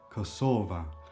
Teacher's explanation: A is the feminine definite article in the nominative case in this case, and it would become kosova. Kosova and then the penultimate syllable is stressed.